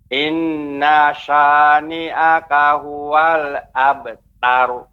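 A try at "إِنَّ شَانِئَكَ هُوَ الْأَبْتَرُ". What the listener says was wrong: Ya, tadi innanya masih terasa panjang, ada jeda. Ya, seharusnya dia lebih pendek Pak, langsung masuk ke ke huruf shin. Inna sya. Baknya. Tidak boleh ya, tapi juga tidak terlalu tipis abtar, tapi pengucapan yang tepat abtar. Terus nanti berlatih Pak ya, pengucapan ra yang ditafkhimkan dijaga, jangan sampai dia menjadi tebal.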